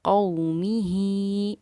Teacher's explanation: खड़ी ज़ेर होने की वजह से एक अलिफ के मक़दार के बराबर हमने इस हा खड़ी ज़ेर ही को खींचा है